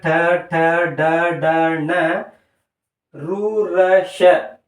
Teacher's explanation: ನಾಲಿಗೆಯ ಮೇಲ್ಭಾಗದಲ್ಲಿ ಇರತಕ್ಕಂತ ಅಂಗಳದಿಂದ ಉತ್ಪತ್ತಿಯಾಗುವ ಅಕ್ಷರಗಳಾಗಿರುತ್ತವೆ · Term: ಮೂರ್ಧನ್ಯ